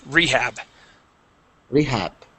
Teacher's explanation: rehab with the accent at the beginning